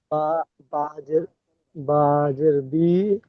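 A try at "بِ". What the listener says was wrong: বাজের বি বলে টান দিচ্ছেন না, টান হবে না। বাজের বি, হামসা জের ই, বাজের বি, ঠিক এইভাবে হারাকাতে পড়া আমরা পড়েছিলাম, জেরের পড়া।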